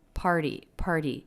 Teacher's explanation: Remember the T is a flap when it comes between two vowels like it did here, or when it comes after an R and before a vowel or diphthong. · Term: flap T